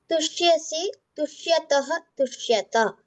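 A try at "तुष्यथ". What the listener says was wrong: There is a mahaprana. Tushyatah, Tushyatha. if you say tushyataha, it becomes the prathama purusha dvivachana. So ensure that you are pronouncing it tushyathaha. Mahapranatha.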